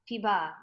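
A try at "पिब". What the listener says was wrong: Not piba. Piba. Piba. You're making the short into long. That you have to be careful. You must, when you read the word, say the letter by letter. The first letter is P, not P. That is P. That you have to remember.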